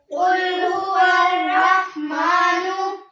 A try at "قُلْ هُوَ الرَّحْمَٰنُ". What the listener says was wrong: یہاں پر آپ نے غلطی کی ہے. قل لام کی آواز کو تھوڑا سا ہلا کر پڑھا ہے. لام کی آواز کو نہیں ہلانا، قلقلہ نہیں کرنا. ہمیں کیسے پڑھنا ہے؟ قل بس. قل هو الرحمن